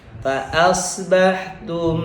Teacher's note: kalau mim sukun ketemu dengan ba, bacanya langsung rapet karena dua-duanya huruf bibir